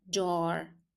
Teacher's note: Remember there's a hidden D in jar.